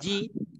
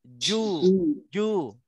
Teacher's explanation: Cuma bezanya kalau ju tu muncung mulut sebab dia sama dengan huruf waw. Kalau ji dia kena lebar sebab dia sama dengan huruf ya.